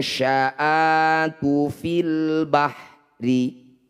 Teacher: bunyi nun sukun dengungkan dua harakat ketika dengung lisan kita sudah ada di syin · Cara bacanya bunyi nun sukun dengungkan 2 harokat. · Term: Ikhfa